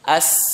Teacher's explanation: Kalau sin di ujung lidah ya, di ujung lidah bertemu dengan dinding dalam gigi bawah ya